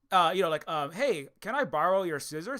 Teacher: It kind of goes up at the end when it's a question. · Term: the uptone